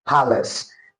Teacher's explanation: the obsolete pronunciation has a weak vowel, that is a schwa sound